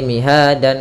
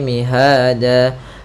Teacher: Awalnya miha dan berubah menjadi mihada disebabkan karena dia waqaf. Maka bukan lagi miha dan kalau kita berhenti, tapi mihada. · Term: mad iwad